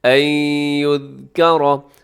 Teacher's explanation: نون ساکن کے بعد یا ہے جو کہ یرملون کا ہے، آپ یہاں پہ ادغام کیجیے گا غنے کے ساتھ، این یذکر۔ اور یذکر کے آخر میں را ہے، را کے اوپر حرکت ہے تو را موٹی پڑی جاتی ہے، یہاں بھی را موٹی پڑیے گا۔